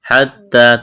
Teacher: تا میں سختی کریں گے، الف کے برابر کھینچنا ہے